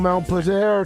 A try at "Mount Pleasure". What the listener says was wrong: it's Mount Pleasure, not Mount Pusher. Mount Pleasure.